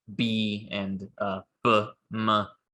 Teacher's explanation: examples of voiced sounds where the glottis is vibrating